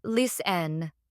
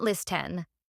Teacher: in the word listen, the T is silent, so it's pronounced listen, not listen.